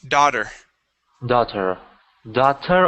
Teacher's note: that T will turn to a D sound.